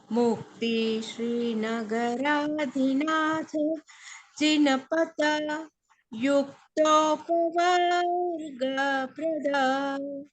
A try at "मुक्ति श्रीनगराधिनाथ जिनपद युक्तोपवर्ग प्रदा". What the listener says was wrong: हाँ अभी त प्रोनाउंस ठीक नहीं हुआ। जिन पद बस छोड़ना है उसको, त को या पे नहीं लेके जाना। जिन पद युक्तो। मुक्ति श्री नगराधिनाथ जिनपद युक्तो। युक्तो पवर्ग प्रदः।